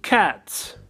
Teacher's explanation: Окончание s произносится как s после глухих согласных. Cats. Глухой согласный – это такой согласный, при произнесении которого голосовые связки не работают, то есть у нас не задействован голос.